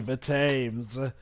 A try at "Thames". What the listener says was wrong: It's Thames. The H is silent.